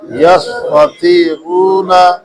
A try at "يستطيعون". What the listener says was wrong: اچھا تے پتلا پڑھنا ہے، توئے موٹا پڑھنا ہے، ٹھیک ہے جی؟